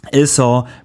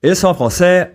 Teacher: In sont, the final t is silent as it is mostly in French, and the vowel is nasal.